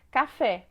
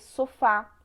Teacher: a última sílaba é mais forte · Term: oxítonas